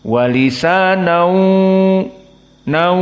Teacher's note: Maka dia di sini idgham bi gunnah. Lalu karena dia idgham bi gunnah, maka ada gunnah, makhrajnya berpindah dari mulut kepada khaysum.